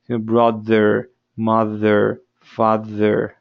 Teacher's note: sino es una D, con un pequeño zumbidito.